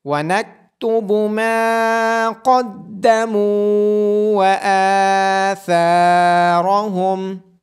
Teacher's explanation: قاف کو اور را کو موٹی آواز کے ساتھ پڑھا جائے گا۔ میم کے بعد الف مدہ اور یہاں میم کے بعد واو مدہ، ثا کے بعد الف مدہ اور الف کے اوپر کھڑی زبر ہونے کی وجہ سے ان تمام کو لمبا کر کے پڑھا جائے گا، ثا کو نرمی کے ساتھ ادا کیا جائے گا۔